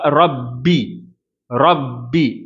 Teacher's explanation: நாவினுடைய பிற்பகுதியை உயர்த்தி ரா அப்படின்னு சொல்லணும் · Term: தப்ஹீம்